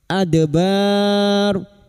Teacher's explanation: dal sukun yang mati asli di tengah kalimat qalqalah sugro. Jangan lupa dipantulkan